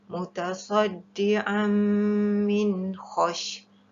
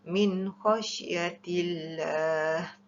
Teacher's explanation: Min khash mesti dijelaskan bacaan iaitu tidak dengung, hukumnya adalah izhar halqi.